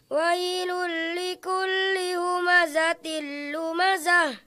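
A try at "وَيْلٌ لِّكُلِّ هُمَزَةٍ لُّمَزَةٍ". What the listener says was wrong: Jangan menghentak. Kita ulangi lagi. Wailul likulli humazatil lumazah.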